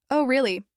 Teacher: say it with a falling tone and a slightly slower pace and suddenly it's sarcastic.